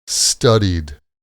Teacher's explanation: I know that last one is a bit tricky because of the Y at the end, but the sound is voiced, so it's just D. No extra syllable.